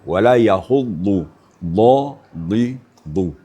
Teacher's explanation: Jadi d makhrajnya bukan di depan, tapi di samping-samping ya. Samping kiri, samping kanan sehingganya ee berfungsi semua terpi lidah berkolaborasi dengan geraham kita. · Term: dad, dhad